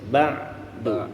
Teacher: kita merasakan huruf ainnya itu di tengah tenggorokan